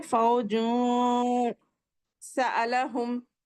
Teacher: نون کو ناک میں چھپائیں گے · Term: اخفا